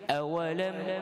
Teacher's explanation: Apa dia izhar? Jelas, bacaan dia tidak ada dengung.